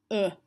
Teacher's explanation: the O is in the shun sound, is making a schwa sound, and the schwa sound is a bit of a fun sound to make.